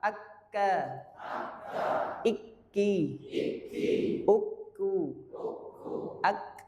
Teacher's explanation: jadi itu harus ada syiddah, ada jeda di situ, suara nafas tertahan. Nah, itu langsung bibak kata itu.